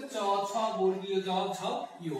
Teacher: জিহ্বার পাতা এবং অগ্রতালুর সংস্পর্শে যে ধ্বনিগুলো উচ্চারিত হয় সেগুলোকে বলে তালব্য